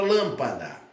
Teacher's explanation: Sílaba tônica, lã. Depois do lã nós temos mais 2. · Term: proparoxítona